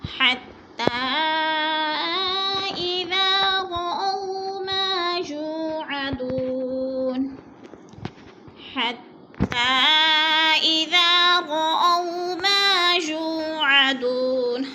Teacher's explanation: حتیٰ پہ مد منفصل ہے، 4 الف مد ہے، 4 الف کے برابر ہم نے اس کو کھینچ کر پڑھنا ہے